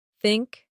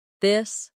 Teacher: For think, it's soft. For this, it's voiced.